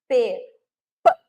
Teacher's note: fechada Total como por exemplo ó o som da letra P eu tenho uma fechamento total e uma abertura como se saísse numa explosão